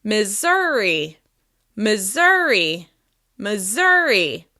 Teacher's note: Missouri is stressed on the second syllable.